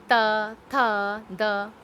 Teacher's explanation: जब भी आप उच्चारण करके देखेंगे कि दांतों के आगे हमारी जीभ लगती है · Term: दंत्य